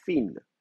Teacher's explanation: on ne fait pas vibrer les cordes vocales, elles ne sont pas voisées, elles ne sont pas sonores, elles sont sourdes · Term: interdentales